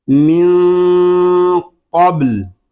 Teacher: نون ساکن میں اخفا قاف پر با ساکن میں کلکلہ